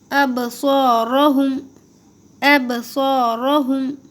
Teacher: ابصارہم، ابصارہم، صاد کو بھی موٹا پڑھنا ہے، را کو بھی موٹا پڑھیں گے کیونکہ را کے اوپر زبر ہے، اور جب بھی را پہ زبر ہو تو را کو منہ بھر کے موٹا پڑھتے ہیں. صاد کو بھی اسی طرح سے موٹا پڑھنا ہے، منہ بھر کے، سین کی طرح نہیں پڑھنا ہے